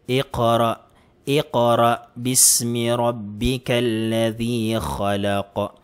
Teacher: So, ang kaf, kapag nakalagay siya sa dulo, kailangan magbabounce po siya. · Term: huruful qalqala